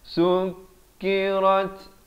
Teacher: ada bunyi hamas, rat bunyi angin itu